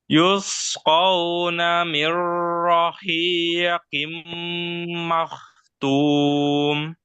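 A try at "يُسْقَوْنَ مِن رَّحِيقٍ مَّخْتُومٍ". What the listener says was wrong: Kho sama ro. Ro-nya kurang takrif sedikit. Kho-nya kurang tebal.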